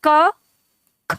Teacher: तो अब आप इनका उच्चारण करके देखो, जैसे आप उच्चारण करते हो क ख, तो आप खुद ही देखेंगे क की तुलना में ख में ज्यादा हवा मुख से निकलती है